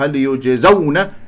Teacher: هل يجزون إلا ما كانوا يعملون، هكذا هل يجزون، الجيم من أحرف قطب جد، هنا ساكنة قلقلة فيها صغرى في وسط الكلام، يجزون لا أسحب ضمة الياء إلى الجيم الساكنة، الزاي مفتوحة، الواو هنا واو لين ساكنة قبلها مفتوح